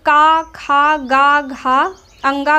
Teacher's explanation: का खा गा घा अंगा का उच्चारण कहाँ से होता है, कंठ से होता है।